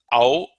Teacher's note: Au, also a diphthong combination of A and U.